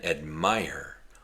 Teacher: It has 2 parts. The first part is the long I sound, I, and the next part is the sound.